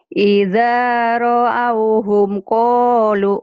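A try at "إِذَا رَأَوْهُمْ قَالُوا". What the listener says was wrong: jangan buru-buru kalau ketemu huruf mati. Idza ra'auhum qalu gitu.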